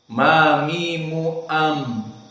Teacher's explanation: pembacaan mim dalam keadaan jahr maknanya tidak boleh ada nafas yang keluar